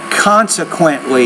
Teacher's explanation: you put more stress consequently on that first syllable